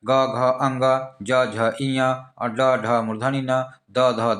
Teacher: इसमें स्वर यंत्री से टकरा करके हवा निकल रहा है बाहर में सांस निकल रहा है बाहर में ठीक है अघोष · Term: सघोष